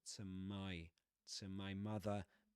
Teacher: My has the price diphthong